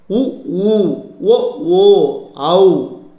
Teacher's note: வாய் திறக்கும் முயற்சியுடன் இதழ்களை குவிப்பதால் பிறக்கும் உயிரெழுத்துக்கள்